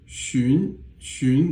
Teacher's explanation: it's the second tone, it's a rising tone